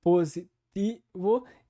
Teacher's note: a palavra positivo que é feito sem aquela palatalização